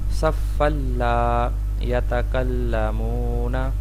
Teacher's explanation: آگے ہے صف اللہ. یہاں پہ صفن تنوین ہے اور اس کے بعد حرف لام ہے تو یہاں پہ بھی ادغام ہوگا مگر غنہ نہیں ہوگا